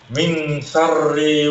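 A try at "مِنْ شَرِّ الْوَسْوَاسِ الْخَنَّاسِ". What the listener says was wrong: Syarril. Ada alif lam sini.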